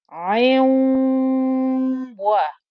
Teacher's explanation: I actually get the ayn with one kasra joining into the wow, and I keep the ghunna. So I will hold the ghunna on this wow.